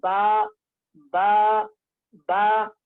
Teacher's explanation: बा का मखरज दोनों होठों की तरी का हिस्सा